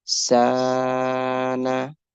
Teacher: Seen with standing Fatha, make it longer.